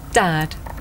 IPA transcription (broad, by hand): dæd